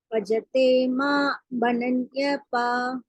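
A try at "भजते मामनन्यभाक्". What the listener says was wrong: Yeah, it's two words, mam and ananya bhak.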